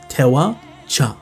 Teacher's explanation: if the verb in the te form is just a te, then it turns into a cha when it's bleeding together